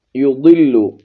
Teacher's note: ضاد کو موٹا پڑھیں گے